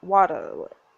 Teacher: hard T sounds and drop R sounds very posh